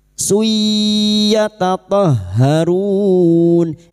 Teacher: Suyya dhamma tanwin pada huruf sin dhamma tanwin bertemu ya idgham bi gunnah masuk pada huruf ya dan mendengung selama 3 harokat